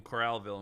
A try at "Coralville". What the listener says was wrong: Did you just say fucking Corralville? It's Coralville. It's Coral and then Ville. Coralville. You said Corralville, you're like okay Corral, like you're in cowboy country.